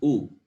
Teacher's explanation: The sound is produced by rounding the lips, and the sound is called labial because it comes from the lips.